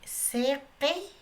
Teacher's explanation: las vocales I se va a pronunciar como si fuera E